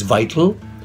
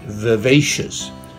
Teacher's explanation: notice how I need to press my lips down and then use my teeth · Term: the V